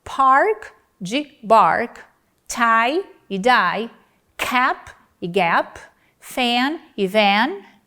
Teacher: é a não vibração ou a vibração das cordas vocais que distingue as palavras park de bark, tie e die, cap e gap, fan e van · Em cada um desses pares, o primeiro elemento é não vozeado e o segundo é vozeado.